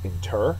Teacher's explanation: Inter is a verb. Second syllable is accented.